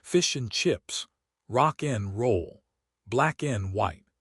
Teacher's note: You almost never pronounce the D in and unless you are pausing for dramatic effect. · The word and reduces to just the sound N, sometimes just a nasal grunt.